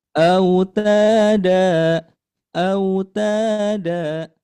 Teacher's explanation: Nah, kemudian yang dalnya sama dibaca panjang dua harakat kemudian diayunkan membacanya.